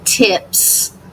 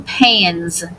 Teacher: If suffix S follows an unvoiced consonant, the S is unvoiced as in tips. If suffix S follows a voice consonant, the S is voiced as in pans.